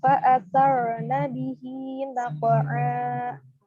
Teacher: ro sukun sebelumnya berharokat fathah itu harus ditebalkan juga